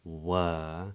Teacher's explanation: the vowel which is made with the lips relaxed and the tongue in the middle of the mouth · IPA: /er/